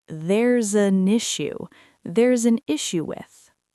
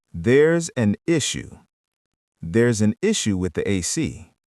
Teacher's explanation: In spoken English, we do not pronounce these as five separate choppy words. They link together into one continuous stream of sound. The s in theirs connects to the a in an, and the n in an connects to the i in issue. · The s in theirs connects to the a in an, and the n in an connects to the i in issue. It sounds like there's an issue. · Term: linking